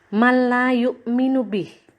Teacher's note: Ini masih bacaan idgham, masih hukum nun sukun dan tanwin. Ada nun sukun bertemu dengan lam, maka disebut bacaan idgham bila gunnah. Jadi memasukkan nun sukunnya ke dalam huruf lam.